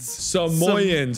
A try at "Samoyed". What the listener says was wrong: No, there's a D. Samoyed. Samoyeds. There's a D.